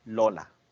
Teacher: Estos laterales es porque el aire va por los lados de la boca.